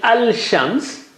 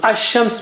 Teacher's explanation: Instead of saying Al-Shams, which is difficult to say, Lam is sacrificing its sound and giving its sound to Sheen and stays there. So Ash-Shams means the sun. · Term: Shamsi letters